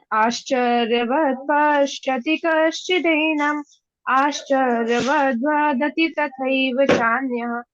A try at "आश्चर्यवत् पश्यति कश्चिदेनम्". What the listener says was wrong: बहुत सुंदर बेटा।